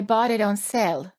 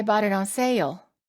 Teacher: the long A vowel sounds even longer because we add an extra sound before the L.